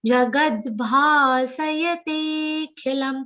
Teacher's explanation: Te is a long sound and ki is a short e sound.